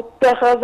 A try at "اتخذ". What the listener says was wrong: أنا عايز في حضرتك تفخمي الخاء شوية. الذين قالوا اتخا